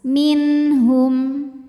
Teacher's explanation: Minh min hukum izhar halqi. Sebab nun sukun menghadapi huruf halqi atau huruf tenggorokan yaitu ha. Maka nun dibaca jelas.